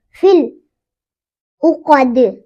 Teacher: دال پہ قلقلہ ہوگا کیونکہ دال حروف قطب جدین میں سے ہے